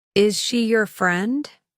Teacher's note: The pitch rises, signaling that the speaker is asking a question. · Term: Rising intonation